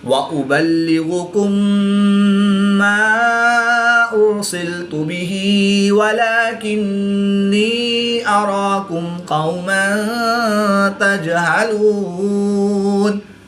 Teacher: میم ساکن کے بعد دوسری میم ہے تو یہاں پر ادغام شفوی ہوگا یعنی غنہ کر کے پڑھیں گے۔ را ساکن سے پہلے حمزہ پر پیش ہے تو را کو پور یعنی موٹا پڑھیں گے۔